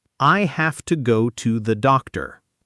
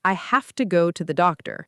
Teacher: Notice have to almost becomes one quick sound. Have to and to and the both shrink into soft schwas.